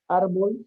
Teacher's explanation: Porque termina en consonante. Y es una palabra grave que tiene la mayor fuerza de voz en la penúltima sílaba